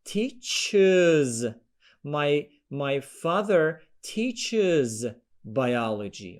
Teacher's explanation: the word ends in ch sound and then you have to add uz